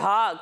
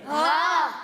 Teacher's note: جب ہم ہا کی ادائیگی کریں گے تو اس سے ہم حلق کے نچلے حصے سے پڑھیں گے